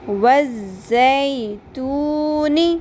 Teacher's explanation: ز شدت کے ساتھ پڑھنا ہے. زال نہیں ہے، یہ زا ہے. زا، زئی، زے نہیں پڑھنا ہے اس کو.